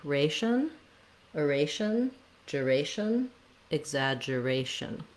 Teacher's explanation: our main stress is on the ray syllable